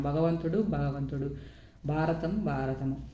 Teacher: మహాప్రాణాలకు బదులుగా అల్పప్రణాలు పలకడం